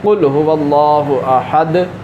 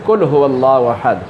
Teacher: موٹے قاف کی بجائے باریک قاف کے ساتھ تلفظ ادا کرتا ہے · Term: موٹا قاف